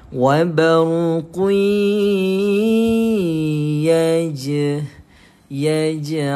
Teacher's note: Lantunan kecil pada huruf jim seakan-akan kita tambahkan padanya huruf i. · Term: qalqala